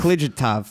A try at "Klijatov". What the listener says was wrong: No, it's click off. It's click off. click off. The J is silent.